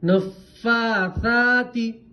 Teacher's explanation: کھڑا زبر ہے تو تھوڑا منہ کھولیں گے آواز نیچے کی طرف جائیں گے الف مدہ کی طرف